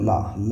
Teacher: पार्श्विक व्यंजन वो होते हैं जब हवा जो है जीभ के बगल से निकल के जाए